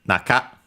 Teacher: on its own accented on the na. So on the first syllable